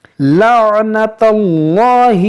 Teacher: اس اللہ عز و جل کے لام سے پہلے زبر ہے، اس کو موٹا کریں گے